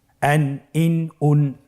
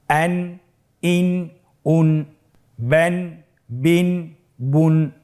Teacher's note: প্রত্যেকটি উচ্চারণের শেষে দন্ত ন উচ্চারিত হচ্ছে